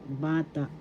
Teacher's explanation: First syllable ba, second syllable ta. Bata. First syllable is the accent.